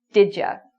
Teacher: So when people say did you very quickly, it sounds like didja.